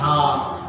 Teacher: जीभ कहीं नहीं छूती है, ये कंठ के भीतर से ही बोला जाता है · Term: कंठ से बोला जाता